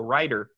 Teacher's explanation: this r we're talking about something that americans do which is t and d become this kind of r the kind of r that's found maybe in languages like spanish